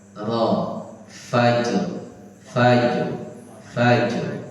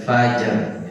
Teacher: ujung lidah, biar dia ada takrirnya, ujung lidah menyentuh langit-langit atas bagian depan.